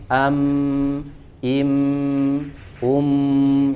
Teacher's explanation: jadi tidak ditambah gunnahnya. Jadi misalkan im, ya, tidak dilamakan, tidak ditahan. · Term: gunnah asliyah